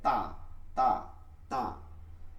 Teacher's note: জিহ্বার আগা সামনের উপরের দুই দাঁতের গোড়ার সঙ্গে লাগায়। সামনের উপরের দুই দাঁতের গোড়ার সঙ্গে লাগায়।